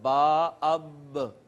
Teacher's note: با جو ہے دونوں ہونٹوں کا جو اندر والا تر حصہ تھا، دونوں ہونٹوں کا تر حصہ ملا ہے، تو یہاں سے با ادا ہوئی ہے۔